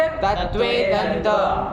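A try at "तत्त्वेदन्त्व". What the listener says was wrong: तत्वे दंत्व, उसका व खा जाओगे।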